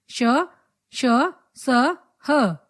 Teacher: इन व्यंजनों का उच्चारण करते समय वायु तेज गति से मुंह से रगड़ खाती है तथा ऊष्मा पैदा करती है, इसलिए इन्हें ऊष्म व्यंजन कहा जाता है।